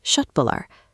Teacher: When a word starts with a K followed by a vowel like uh, that K is pronounced like sh. So, it sounds like shö tbullar.